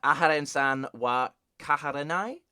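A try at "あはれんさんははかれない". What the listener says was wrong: Close. Hakarenai. You've switched 2 syllables.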